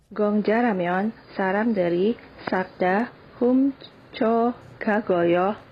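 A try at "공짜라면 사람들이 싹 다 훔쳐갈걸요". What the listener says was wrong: You could have did more emphasis on the 갈. 훔쳐갈걸요.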